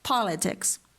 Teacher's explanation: British English will use the lip-rounded O, but American English will use the unrounded back-open A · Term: lot vowel